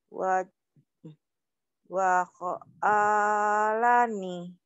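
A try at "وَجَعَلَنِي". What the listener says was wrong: Itu titiknya di bawah, bukan ho. Iya, ketuker ya. Waja'alani.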